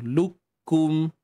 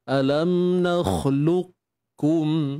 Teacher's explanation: kita baca dengan idgham naqis, iaitu dengan mengekalkan sifat isti'la pada qaf. Sifat tebal pada qaf tu kekalkan.